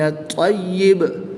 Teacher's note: یاد رہے کہ با ساکن میں قلقلہ ظاہر کریں گے اور طا مشدد میں قلقلہ جماعوں کے ساتھ ادا کریں گے